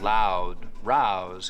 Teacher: Canadians still use that wide ow diphthong